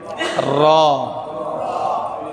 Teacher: এই র উচ্চারণ করতে গিয়ে জিহ্বা কিন্তু এরকম কাঁপবে, বাড়ি খাবে। র, এটাকে আরবিতে বলা হয় তাকরার।